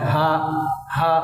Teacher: এই হাটা গলার শুরু থেকে উচ্চারিত হয় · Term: গোল হা